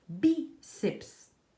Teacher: tem a sílaba tônica no bi, ou seja, a penúltima, paroxítona.